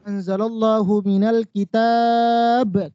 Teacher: tafkhim ya dibaca tebal kenapa tebal Ibu karena sebelumnya berharokat fathah